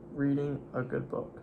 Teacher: Good, you kept your tongue back in your throat.